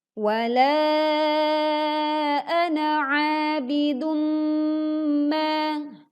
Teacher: 'Abidum ma, a-nya panjang 2 harakat, lalu bidum ma bacaannya dengung karena ada domah tanwin bertemu dengan mim · lafaz ana ini kita baca pendek saat kita membacanya wasal atau sambung. Atau kita bisa melihat ada simbol bulat lonjong atau namanya adalah sifr al-mustatil.